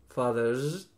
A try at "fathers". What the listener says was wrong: That's it.